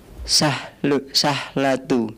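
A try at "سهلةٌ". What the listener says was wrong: Sahlatun. Nah, tidak ada alif lam. Maka bagaimana kalau tidak ada alif lam? Tematain muncul. Sahlatun.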